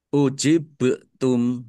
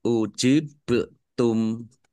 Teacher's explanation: ba sukun ini bacaan qalqalah dibaca memantul ya. Ditampakkan pantulannya.